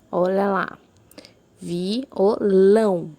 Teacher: A mais forte foi a sílaba lão, por isso ela é uma oxítona, é a última sílaba.